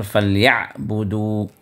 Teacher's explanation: عین کی ادائیگی آپ جو ہے وسط حلق سے اس کو ادا کریں زور دے کر